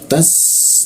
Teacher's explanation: Nah ini tak biasa sa karena posisi lidahnya di bawah, belakang gigi bawah, jadi rongga udara terbuka dan cukup kencang suaranya. Tas, nah hembusannya cukup kencang.